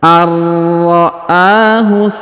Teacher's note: Jadi nun sukun menghilang karena sudah melebur ke huruf ra, ya. Kemudian huruf a dipanjangkan 2 harokat karena berharokat atau bertanda alif kecil di atasnya